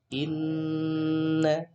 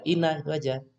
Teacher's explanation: Nah, ini dibaca dengan suara berdengung ya. Ketika ada nun bertasjid ya, maka suaranya harus didengungkan. Inna. Istilahnya dalam ilmu tajwid namanya bacaan gunnah gitu ya.